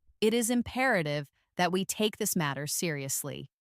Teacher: with a lower, steady, more formal tone